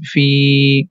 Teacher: so we have to stretch the Fi sound for two count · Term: long sounds